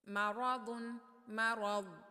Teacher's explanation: آواز کو روکنا ہے یہاں پر، ضاد کی آواز کو ہلانا نہیں ہے